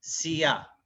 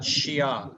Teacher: the correct way of saying it is the frontal, pronunciation. Your tongue is really on the front part of your mouth. Sia, not Shia, which is at the lower palate of your mouth.